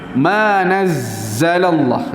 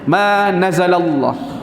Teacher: Macam kalau tak ada sabdu bunyi dia ma nazalallah kan. Tapi kalau sabdu dia jadi macam tekan dan panjang sikit desiran dia. Huruf tu dia akan bunyi panjang sikit sebab dia bertindih.